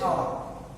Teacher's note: Its first letter is H, but its sound is O. not ho. Its sound is o, not ho, not s.